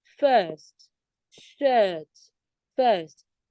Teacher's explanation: It's the longer version of the schwa sound.